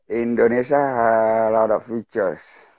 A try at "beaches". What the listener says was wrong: A lot of great beaches. Beaches. It sounds like you're saying features, and I'm saying beaches, like ocean. A lot of people have a hard time saying the word beach in English because it kind of sounds like another word.